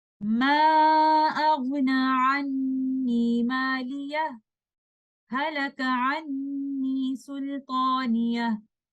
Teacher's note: we take a breathless pause, and then we continue the recitation with the word Halaka